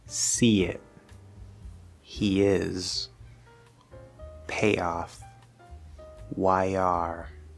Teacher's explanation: When you leave that position of E, I, A, I, or OI, it's close enough to the Y sound that when we leave that position to go to the next vowel sound, we're going to hear a tiny, tiny, tiny little bit of a Y sound between the first word and the second word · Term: small Y